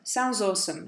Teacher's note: he takes the D sound off sounds and joins that to awesome.